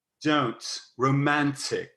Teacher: at least some of those T's should be a little bit sloppy. So they may almost feel like they're a TS.